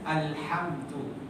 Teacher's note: Maka oleh kerana dia punya makhraj di khayshum, mim tu kena didengungkan satu harakat.